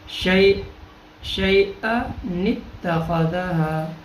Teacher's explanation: نون قطنی, دو زبر دو زیر کے بعد دو پیش کے بعد اگلا کلمہ حمزہ وصلی سے شروع ہو رہا ہو, دونوں کلموں کو ملا کر پڑھنے کی صورت میں تنوین کے دو حرکتوں میں سے ایک حرکت کو زیر والا نون بنا کر ہم حمزہ وصلی کو حذف کرتے ہوئے حمزہ کی جگہ اس نون کو پڑھیں گے اور اس نون کا نام نون قطنی رکھا گیا ہے.